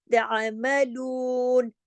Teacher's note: पेश के साथ, दम्मा के साथ आएगा या पेश के साथ, इसको अरबी में दम्मा कहते हैं ना पेश को, तो आएगा, तो फिर ये वाव 2 हरकत खींचेगा, इसको कहते हैं वाव मद। ये मद का काम कर रहा है वाव।